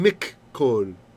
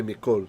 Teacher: min kol became mik kol. And now we just say mikol. But it should have been two kafs.